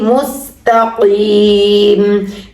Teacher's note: سین کی آواز سیٹی کی طرح ہوگی